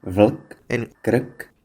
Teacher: It also has syllabic consonants, which are consonants that essentially take the role of vowels